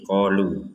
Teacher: Kalau berhenti di qolu Walaupun ada harakat bendera tetap kita memanjangkannya dua harakat saja jangan menjadi 4 sampai 5 harakat Kenapa harakat bedarnya